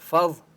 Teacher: ضا کے اوپر تشدید ہے اس لیے مضبوطی کے ساتھ پڑھیں گے